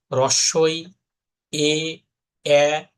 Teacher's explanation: ঠোটের দিকে তাকে দেখেন যে ঠোটটা প্রসারিত হচ্ছে এক্সটেন্ড হচ্ছে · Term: প্রসৃত সর